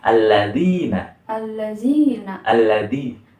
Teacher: jadi ujung lidah ini nih berada di ujung gigi seri atas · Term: huruf za